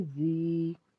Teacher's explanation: آگے زال نرمی سے ادا کریں گے، زال کے بعد یا ہے، یا ساکن ہے، یا سے پیچھے زیر ہونے کی وجہ سے ہم نے مد کرنی ہے، 1 الف کے برابر کھینچ کے پڑھنا ہے، زال یا زیر زی۔